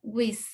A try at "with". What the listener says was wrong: Casi, casi, porque no es una S. ¿Ok? No es una S, es with.